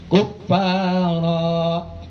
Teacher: kalau kita berhenti kuffara, jadi seolah-olah tanwinnya dibaca fathah satu. Di situ ada tanwin, ada alif.